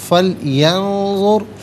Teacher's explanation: را ساکن ما قبل ذو پر پیش، را ساکن کو پر کر کے پڑھا جائے گا